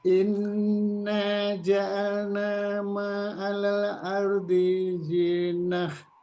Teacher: kalau berhenti, tak ini berubah dibaca menjadi hak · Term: Tak marbutoh